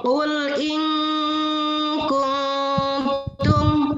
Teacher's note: Ya, yang dibacanya harus samar dan dengung. Nun mati ketemu kaf adalah samar dan dengung. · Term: ikhfa